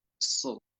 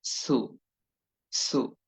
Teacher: গোল করেই উচ্চারণ করতে হয় তারপরও আরো যে বিষয়গুলো করতে হয় জিহ্বার গোড়াকে কিছুটা উপরের দিকে উঠিয়ে দিতে হয় আওয়াজ এবং কণ্ঠস্বরকে কিছুটা ভারী এবং মোটা করতে হয় শীষসহ মোটা করে বলতে হয় সুটা হচ্ছে সুদে পেশের উচ্চারণ হবে